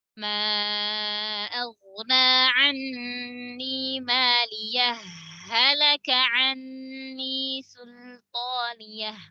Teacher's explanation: Cara yang kedua yang diperbolehkan itu adalah menyambungkan dengan diidghamkannya ha ke ha. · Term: idghamil ha fil ha